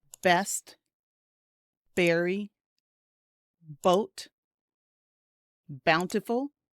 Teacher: when you release your lips, you know, when you open them, the air creates the B sound.